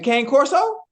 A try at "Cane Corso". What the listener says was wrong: It's pronounced Connie Corso, but okay, go ahead, take off. I'm telling you what the pronunciation of the dog is. Connie Corso.